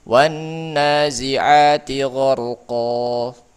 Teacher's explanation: Kalau wakaf maka dia jadi panjang jadi mad iwad karena diiwad nun sukun yang ada dalam tanwinnya oleh alif.